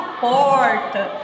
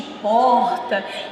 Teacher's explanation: no interior de São Paulo, você vai perceber a presença do R retroflexo, aquele da porta.